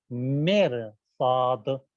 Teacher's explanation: تو کہتے ہیں کہ ان 7 حروف میں سے اگر کوئی حرف آ گیا اور اس سے پہلے جو حرف ہے یعنی رے وہ ساکن ہو اور رے سے پہلے والا جو حرف ہے وہاں کے اوپر زیر کی علامت ہو, تو یہاں کے اوپر بھی رے کو تفخیم کیا جائے گا, یعنی موٹا بنا کے ادا کریں گے